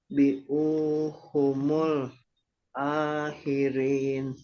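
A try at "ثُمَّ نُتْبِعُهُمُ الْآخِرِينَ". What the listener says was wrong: Bi'u itu pendek. Maknya pendek. Maknya jangan panjang.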